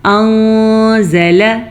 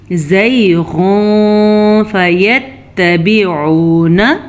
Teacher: تو ہم نون ساکن کو بھی چھپا کے پڑھیں گے غنے کے ساتھ، اور نون تنوین کو بھی ہم چھپے ہوئے غنے کے ساتھ پڑھیں گے۔ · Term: اخفاء